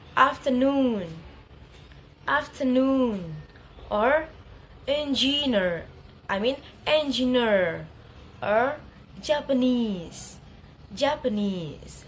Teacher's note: secondary stress in the first syllable and primary stress in the third syllable